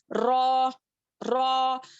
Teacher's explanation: زبان کے کنارے کو سامنے کے 4 دانتوں کے مسوڑوں میں لگانے سے را ادا ہوتا ہے